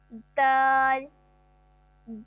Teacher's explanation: زبان کی نوک جب ثنایا علیہ کی جڑ اندر کے مسوڑوں سے لگے گی تو اس سے حروف نطاعیہ دال ادا ہوگا